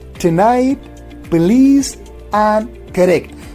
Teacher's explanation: So we do not pronounce shwa or weak vowel here in correct, in police or tonight, because n and l and r, they become syllabic consonant